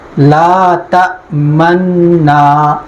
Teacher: ہماری قرات میں یہاں ادغام ہے، البتہ پیش کو ختم نہیں کیا ہے، پیش کی آواز ختم کی ہے، حرکت باقی رکھی ہے، ہونٹوں کی حرکت باقی رکھی ہے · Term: اشمام